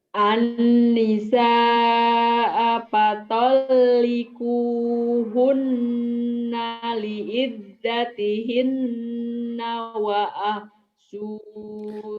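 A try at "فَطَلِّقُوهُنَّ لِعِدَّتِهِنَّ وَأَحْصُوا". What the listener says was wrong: Pendek. Wa ahsul.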